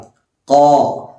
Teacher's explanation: പിന്നെ ശ്രദ്ധിക്കാനുള്ളത് മുത്തഖി, ഖാഫാണ്. ഖാഫിൻ്റെ മഖ്റജ് എന്ന് പറയുന്നത് അഖ്സൽ ലിസാൻ ആണ്, അഥവാ നാവിൻ്റെ അങ്ങേ അറ്റം. ആ നാവിൻ്റെ അങ്ങേ അറ്റം മേലെ അണ്ണാക്കിൽ മുട്ടിക്കുക.